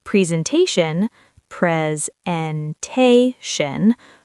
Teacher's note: Four syllables. Stress on the third.